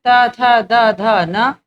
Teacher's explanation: दंत से उच्चारित वर्ण है